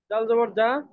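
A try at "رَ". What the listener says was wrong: ডাল না ওটা, র র।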